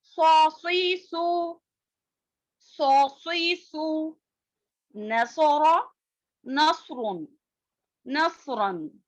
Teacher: صاد کی آواز موٹی اور سیٹی والی ہوتی ہے